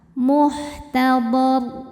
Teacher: Ra sukun ketika berhenti disukunkan dan dibaca secara tafkhim karena sebelumnya berharokat fathah, maka dibaca tebal.